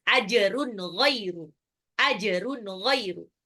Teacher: jimnya qalqalah, tanwin ketemu ghainnya itu adalah izhar jelas